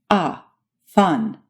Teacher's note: Next comes A as in angel or fun. This vowel is similar to English's A as in father, but it's a bit more forward in your mouth